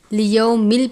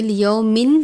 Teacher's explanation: تنوین کو لام مشدد سے ملا کر ادا کریں گے